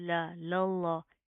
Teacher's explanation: پہلا لام باریک دوسرا لام موٹا